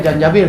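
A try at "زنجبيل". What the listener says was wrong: Zanjabil. Zanjabil. Za bukan ja. Zanjabil. Zanjabila.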